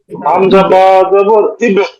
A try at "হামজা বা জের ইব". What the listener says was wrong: না, হামজা বা জের ইব ইব। জবর না, জের